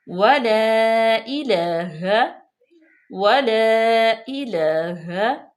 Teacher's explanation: یہ دیکھیں کہ واو پہ زبر ہے، لام پہ بھی زبر اور الف پہ مد ہے، تو اس کو ہم لمبا کریں گے